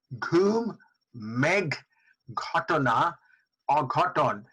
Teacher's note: a breathy aspirated sound which is found in Bengali speech but not found in many other languages.